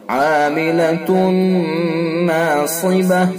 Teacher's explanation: تا کے اوپر 2 پیش ہیں، تنوین ہے، تنوین کے بعد یومن میں سے نون ہے، ادغام ناقص ہوگا بالغنہ، غنہ کے ساتھ پڑھیں گے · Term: ادغام ناقص بالغنہ